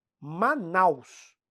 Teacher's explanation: a vogal forte vem primeiro e vai murchando a pronúncia para semivogal · o A é quase todo o tempo da emissão vocálica. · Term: decrescente, ditongo decrescente